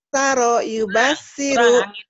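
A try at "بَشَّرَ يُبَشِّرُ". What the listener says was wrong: Kurang itu sin gede. Basaro yubashiru gitu.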